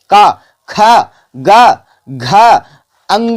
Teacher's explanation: direct हमारे कंठ से आवाज बाहर निकल रहा है